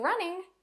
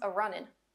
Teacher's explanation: Another dialect spoken in the mountains of Eastern America, Appalachian English, will often add an A to the front of an ing verb and drop the G from the end. So running becomes a runnin'.